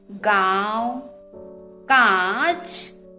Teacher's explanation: जब हम इनके शब्दों को बोलते हैं गांव, कांच, तब हमारे मुंह और नाक से ध्वनि निकलती है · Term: अनुनासिक